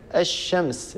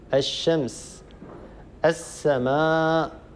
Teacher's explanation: اللام الساكنة هذه تتحول إلى الحرف الثاني، الحرف الآتي بعدها، فيصير النطق بحرف واحد مشدد من جنس الحرف الثاني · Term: الإدغام الشمسي